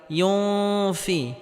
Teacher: নুন সাকিনের পরে ইকফার হরফ ফা আসার কারণে এখানে ইকফা গন্নাহ করে পড়তে হবে।